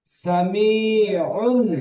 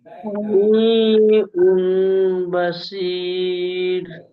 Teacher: তানবিনের পরে যদি বা আসে তানবিনকে মিম দ্বারা পরিবর্তন করে পড়তে হবে